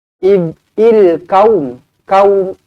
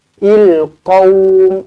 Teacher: Kalau kaum dia jadi huruf kaf, tapi qa mulut bulat.